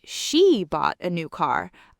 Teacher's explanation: I'm emphasizing who bought it. She did, not someone else. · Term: sentence-level stress